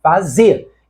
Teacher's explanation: Com a eliminação do R, fazer passa a ser uma palavra de duas sílabas, cuja sílaba tônica é a última, fazer. Então a palavra é oxítona, e oxítonas terminadas em E são acentuadas.